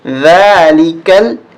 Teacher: یہاں زبان باہر نکالیں گے ہم، جب بھی ذال آئے گی تو اس کو زبان باہر نکال کے پڑھا جاتا ہے